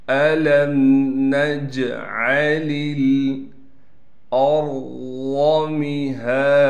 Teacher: میم کو بالکل نہیں کھینچنا، لیکن میم کے بعد ہا پر کڑا زبر ہونے کی وجہ سے ہا کو ایک الف کی مقدار کھینچیں گے۔ دال پر دو زبر ہونے کی وجہ سے جب دال پر وقف کریں گے پھر دال کو ایک زبر دیں گے، اور دال کے بعد الف ہونے کی وجہ سے پھر دال کو ہم کھینچیں گے۔